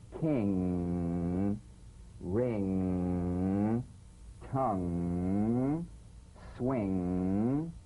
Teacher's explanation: use of the g or k drumbeat following the ng so practice the final ng with no drumbeat as the tongue leaves the soft palate at the end of the word · the ng is a voiced tongue back soft palate nasal consonant · sing with the back of the tongue in contact with the soft palate